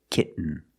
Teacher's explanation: the syllable is not stressed the T makes a different sound we have to make a stop T and Link it to the N